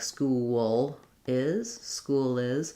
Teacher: My L is kind of in between a dark L and a light L. So lifting as I'm connecting L's and having a vowel sound before it to make it, to avoid using more of that liquid L sound.